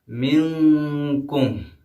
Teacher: وَلَقَدْ أَضَلَّ مِنْكُمْ، منکم میں آپ نے دیکھا میم کے بعد نون آیا ہے، نون جو کہ ساکن ہے اور نون ساکن کے بعد کاف آیا ہے اور کاف حروف اخفا میں سے ہے اس لیے یہاں پہ اخفا والا قاعدہ آئے گا